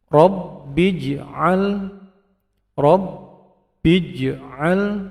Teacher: tahan 'ba', lalu qalqalah sughra